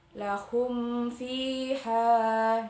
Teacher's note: mim sukun bertemu dengan huruf fa atau kita sebut idhar syafawi, dibaca terang atau jelas antara mim sukun dan huruf setelahnya